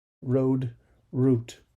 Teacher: the /d/ sound is simply less aspirated than the aspiration for /t/ sound